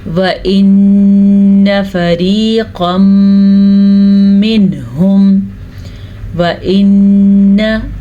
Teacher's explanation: गुन्ना तो करना है लेकिन नून को खींचना नहीं है। नून के ऊपर ज़बर है, अगर यहाँ पे अलिफ होता तो फिर हम खींच के पढ़ते, लेकिन अलिफ नहीं है।